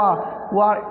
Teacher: वाह किससे बोला जाता है? बोला जाता है दंत और ओष्ठ से